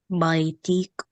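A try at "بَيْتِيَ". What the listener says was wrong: Beta, don't stop on the letter, just pronounce all the short vowels.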